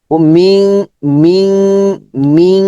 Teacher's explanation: নুন সাকিনের পরে কফ আছে, গুন্না হবে, এবং এখানে তাসদিদ নাই, অনুস্বর হয়ে যাবে